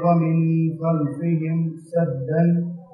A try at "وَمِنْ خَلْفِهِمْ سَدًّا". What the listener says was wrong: یہ غنہ کا ذرا تھوڑا سا مسئلہ ہوا ہے، یہاں غنہ نہیں ہے، وَمِن خَلْفِهِمْ میں غنہ نہیں ہے، لیکن یہ غنہ ہے.